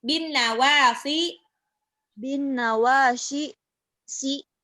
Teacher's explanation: Itu sot itu tidak shin, tapi si lebih mirip sin biasa.